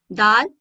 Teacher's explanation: دال زبان کو سامنے والے دونوں دانتوں اور مسوڑھوں پر لگا کر باریک ادا ہوتا ہے۔ دال سامنے والے دانتوں کے ساتھ اگر زبان کو لگائیں تو باریک ادا ہوتا ہے دال۔